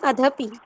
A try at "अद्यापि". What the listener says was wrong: अद्यापि, अधपि नहीं, अद्यापि आ आना चाहिए। आ प्लस आ भी संधि है, बड़ी संधि हो जाएगी, अद्यापि।